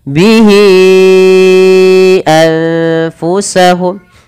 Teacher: panjangkan hi di sini berapa harokat teman-teman? 4 harokat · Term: mad silah tawilah